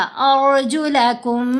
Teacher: रा साकिन है लेकिन इससे पहले हमज़ा के ऊपर ज़बर है। अब हमने रा को मोटा पढ़ा।